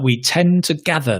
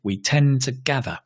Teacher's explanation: Notice the to becomes t because we stress the gather. The d. We tend to gather.